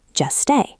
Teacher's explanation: Just stay. Just ends in t. Stay starts with s. Drop the t.